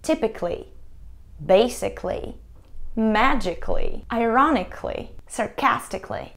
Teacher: мы не произносим звук «а», мы не говорим «cally»